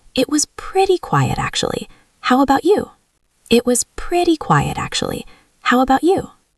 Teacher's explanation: if the voice goes up a little bit at the end of the phrase, it sounds like you are open to talking · Yes, it is like a wave. It starts a bit higher, goes down, and then goes up when you ask the question.